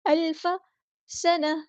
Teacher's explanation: گول تاک کو ہاں میں چینج کر دیں گے وقف کرتے ہوئے